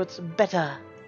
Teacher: You may have noticed I also pronounce the T sound better more forcefully. Americans might turn into the D sound, but posh Britons enunciate the T, so it's better. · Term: hard T sounds